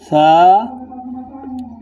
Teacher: সা যখন উচ্চারণ করবেন তখন জিহ্বার আগা সামনের উপরে যে দুইটি দাঁত আছে সেই দুই দাঁতের আগার সঙ্গে লাগিয়ে উচ্চারণ করবেন।